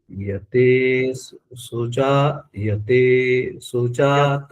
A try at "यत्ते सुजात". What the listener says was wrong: यत्ते सुजात, दो ता है ना भैया, एक ता पूरा एक आधा भी है, आपको अगर स्पष्ट हो।